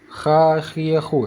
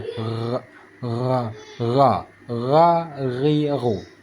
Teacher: kalau huruf Kha seperti ada kerokan kalau huruf Gin yaitu seperti ada getaran